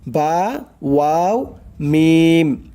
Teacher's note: দুই ঠোঁটের মধ্যস্থল হইতে পড়া হয় বা, ওয়াও, মিম